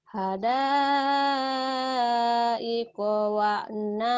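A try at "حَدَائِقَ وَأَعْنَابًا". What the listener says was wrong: wa'a wa'anaba bukan wa'naba, wa'anaba.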